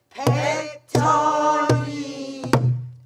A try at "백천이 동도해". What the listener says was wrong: 백천이하고 바로 동도회 아닙니까? 한 박자인데 왜 쉬세요 뒤에? 없어지는 거 다 한 박자씩이요.